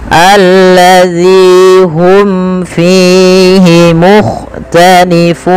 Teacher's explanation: Ini mim mati bertemu fa, ada idhar syafawi, jelaskan mimnya